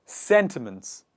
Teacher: the stress is on the first part and the initial part of the word